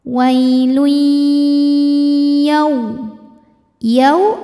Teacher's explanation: namanya idgham bhunah sebab ada tanwin dammah yang menghadapi huruf ya cara membacanya tanwin dileburkan ke ya · Cara membacanya tanwin dileburkan ke ya. Wailui dan tahan, dengungkan, masuk disertai dengung. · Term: idgham bi gunnah